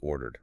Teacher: >> But if a verb ends in a voiced sound like the R in order, your vocal cords are already buzzing. It's physically easier to finish with a voiced D, so ordered becomes ordered.